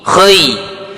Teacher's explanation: Ketika ya sukun sebelumnya fathah, maka huruf linnya condongkan ke huruf i